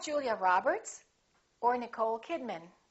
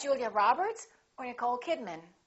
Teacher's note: remember the final name gets the most stress